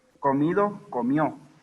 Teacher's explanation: La caída de la D intervocálica de sílabas finales